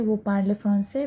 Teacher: we just raise an intonation at the end of the sentence, okay? That is just a question mark is at the end of the sentence, okay?